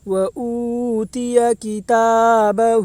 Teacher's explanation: واو ساکن سے پہلے پیش ہے اس لیے واو مدہ ہوگا، واو مدہ کو ایک الف کے برابر کھینچ کر پڑھیں